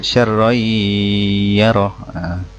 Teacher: huruf nun mati dileburkan dengan dengung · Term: Idgham Bighunnah